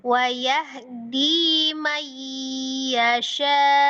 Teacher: syanya itu 4. Kalau dinya 2.